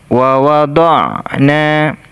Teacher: Makhraj huruf ain ini atau tempat keluarnya suara dari tenggorokan bagian tengah, seperti makhraj huruf ha tadi, tenggorokan bagian tengah, bunyinya seperti ini.